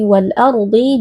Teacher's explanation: huruf Dad di sini walardhi juga merupakan Huruf tebal dan kita angkat juga pangkal lidahnya